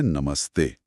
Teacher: विसर्ग भी उसी स में बदलेगा जो दांत से बोला जाता है। यानी दंत्य स और शब्द बन जाता है नमस्ते।